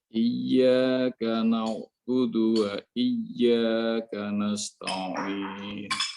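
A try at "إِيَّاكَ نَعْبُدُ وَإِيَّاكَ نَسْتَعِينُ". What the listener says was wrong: Begitu juga dengan kaf yang di sini. Iyyaka disengajakan keluar. Makhraj sudah tepat. Tapi tekan lagi hingga keluar gesekan udara. Iyyaka na'budu wa iyyaka nasta'in. Jadi ada nasta'in seperti itu.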